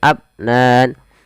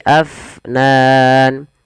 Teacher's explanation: alirkan nafasnya jangan abnan tapi Afnan